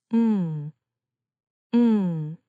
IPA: ŋ